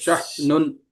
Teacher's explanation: ٹھیک ہے, حمزہ ساکن کے لیے وہاں پر آپ یس اپنے جو ہے نوٹس میں لکھ لیجئے, حمزہ ساکن کے پڑھنے میں جھٹکا ہوتا ہے